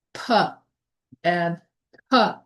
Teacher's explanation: Stops. Air is completely stopped and then released like p and p.